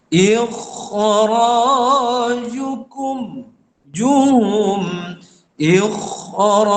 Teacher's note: maka ulama mengatakan mesti ditebalkan kha tu kerana selepasnya ra tu bersifat tafkhim. Ini tidak boleh dibuat pertengahan, tak boleh.